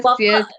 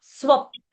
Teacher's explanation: No, don't say swapa. Pa is half. Swap. Say only swap and don't say swapa.